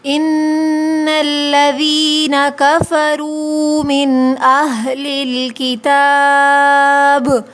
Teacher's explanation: ان الذین میں دیکھیے نون مشدد ہے، اس پہ غنہ ہوگا۔ یا ساکن سے پہلے زیر ہے، یا مدہ ہے، یہاں کھینچیں گے۔